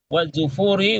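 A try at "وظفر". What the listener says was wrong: Wazufri bukan Zufur, Zufri.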